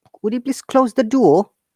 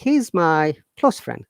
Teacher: there is a difference also sound close noun close great so when it is a verb the s of the close it sounds like z remember that but when it is a noun the s should sound like s